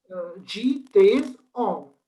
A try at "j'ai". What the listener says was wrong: No, it's not days. It's these. E. These. And it's not she. It's j'ai.